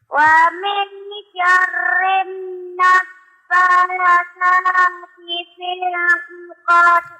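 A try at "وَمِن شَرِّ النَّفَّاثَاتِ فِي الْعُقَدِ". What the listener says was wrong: Dengungnya tambah lagi nak. Wa min syarrin naffasati fil 'uqad.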